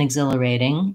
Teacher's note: the T in exhilarating is a flap T. It comes between two vowels and it doesn't start a stressed syllable. I just think about it as a light, easy D. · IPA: /ɪgˈzɪləreɪtɪŋ